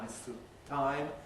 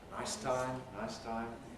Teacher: Some of you may need to practice not having a vowel after the [s] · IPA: [ˈnaɪs ˈtaɪm]